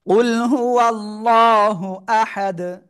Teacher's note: আহাদুন অক্ফ করলে কি হবে? দাল সাকিন হয়ে যাবে, তখন কি হবে? কলকলা হবে।